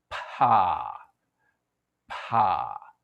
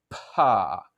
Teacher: For pa, it's opposite. For pa, your lips part first before your vocal cords start vibrating.